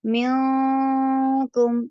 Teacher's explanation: منکم نون کی آواز باریک ہو جائے گی اور ناک میں چھپ جائے گی اور تھوڑی دیر رکے گی ناک میں